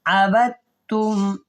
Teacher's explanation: یہ جو دال ہے اس کو ہم نے نہیں پڑھنا، با کو ہم نے ڈائریکٹ اس کے ساتھ ملانا ہے تا کے ساتھ، کیونکہ تا کے اوپر شد ہے. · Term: ادغام